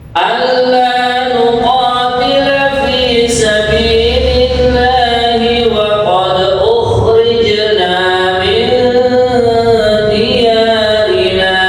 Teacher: Waqad, kemudian yang kedua ukhrijna, ini jim dan dal yang berharokat sukun dibaca qalqalah